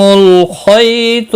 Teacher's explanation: خی یالین ہے، تھوڑا نرمی کے ساتھ کھینچ کر ادا کریں گے. خا اور تو دونوں مستعلیہ ہیں، پور پڑے جائیں گے. اسودی باقی کسی بھی حرکت والے حرف کو کھینچنا نہیں.